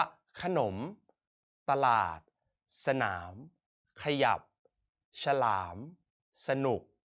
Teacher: พยัญชนะตัวหน้าเราจะอ่านออกเสียงแค่กึ่งเสียงเท่านั้น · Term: อักษรนำ